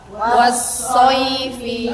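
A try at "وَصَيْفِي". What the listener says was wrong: Wawunya. Jadi harus monyong. Wasoifi.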